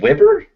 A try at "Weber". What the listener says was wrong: It's not Weber, it's an E. You keep saying Weber.